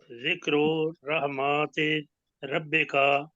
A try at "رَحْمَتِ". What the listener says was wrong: پڑھیں گے۔ ایک تو رحماتی نہیں پڑھنا، رحمتی، رحمتی ربی